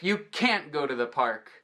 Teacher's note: Na verdade, são 3 passos que vão entregar qual é qual, já que a gente não pronuncia o T normalmente de can't